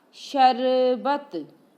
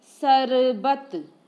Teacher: श को श न बोल के स बोलेंगे।